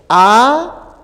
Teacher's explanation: la lengua está abajo eso qué significa significa que además de ser media es baja